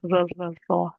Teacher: Ra is where I'm going to grab the tip of my tongue and touch it behind my teeth. Okay? So, so just behind. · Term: light raw